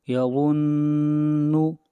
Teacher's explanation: نون کے اوپر شد ہے اس لیے غنہ ہوگا۔ نون یا میم کے اوپر جب بھی شد ہوگی تو غنہ ہوگا۔